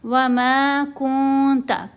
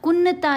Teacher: نون کی آواز پر ہم احفا کریں گے، نون کی آواز کو ناک میں چھپائیں